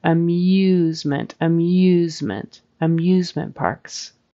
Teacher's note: amusement it's not just a a plain old u o ooh there's a y kind of sound in front of it · after the M there's like an invisible Y sound